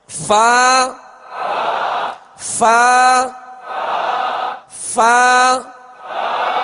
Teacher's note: اوپر کے دانتوں کے کنارے اور نچلے ہونٹ کے تر حصے سے فا ادا ہوتا ہے